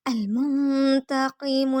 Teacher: المنتقم، میم کو نون سے ملائیں گے، نون ساکن اخفا کریں گے یعنی ناک میں آواز چھپائیں گے